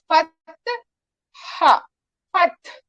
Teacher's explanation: हा का मखरज कहाँ है, हमारे वसत हलक में, तो फतह हा, फतह, इस तरह से हा के ऊपर बिल्कुल हरकत नहीं आनी चाहिए, ना हा के ऊपर ना ता के ऊपर। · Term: हाय साकिना